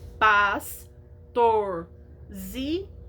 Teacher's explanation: porque ela tem mais de três sílabas ela tem quatro e ela é paroxítona porque a sílaba mais forte é a penúltima